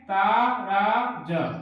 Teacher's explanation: तगण में ता रा ज, ता गुरु, रा गुरु, ज लघु